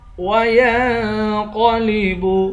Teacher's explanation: وَيَنْقَلِبُ، یا کو نون سے ملا کر نون پر اخفا کریں گے، قاف کو موٹا پڑھیں گے۔ وَيَنْقَلِبُ إِلَىٰ أَهْلِهِ، لام پر کھڑا زبر بھی ہے اور مد بھی ہے، اس مد کو 3 الف کی مقدار کھینچ کر پڑھیں گے۔